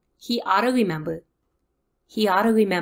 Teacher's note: in this sentence we hear he and ought to push together